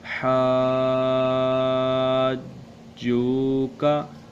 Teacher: دابتن، آگے حاجکا، حاجوکا، جیم واو پیش جو، واو ساکن سے پہلے پیش ہے اس لیے ہم اس کو ہم لمبا کریں گے